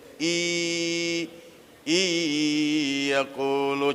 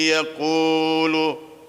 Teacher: Ini nun sukun di depannya huruf ya. Jadi in yakulu bacanya i yakulu. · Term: idgham bi gunnah